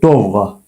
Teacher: Yəni vurğunu sonda deyirik.